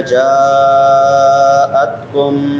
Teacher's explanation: جاءتکم جا پہ مد متصل ہے